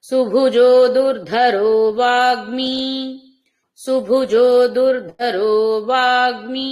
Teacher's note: సుభుజో దుర్ధరో వాగ్నిమి మూడు దీర్ఘాక్షరాలు ఉన్నాయి మూడు పదాల్లో కూడా సుభుజో దుర్ధరో వాగ్నిమి సుభుజో దుర్ధరో వాగ్నిమి ఇలా వినిపించాలి దీర్ఘాలు పూర్తిగా మహేంద్రో